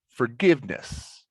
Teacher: give is where the stress is